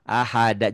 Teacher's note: Jangan ada H-nya ya.